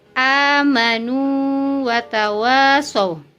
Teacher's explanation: Jadi waw sukun tetap sukun, waw hidup tetap hidup. Tidak ditasydidkan karena tidak berlaku hukum idgham mutamatsilain.